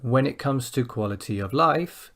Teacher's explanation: the down comes on quality of, and then the up comes on life.